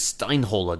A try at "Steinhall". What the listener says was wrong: Well, it's Steinhall. The R is silent.